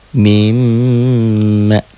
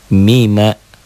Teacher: Mim, tuh di latennya ada kan M-nya tiga. Mimma ditahan double dan dengung.